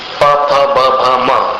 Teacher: प फ ब भ म, इन 5 को दोनों होठों से उच्चारित करना पड़ता है।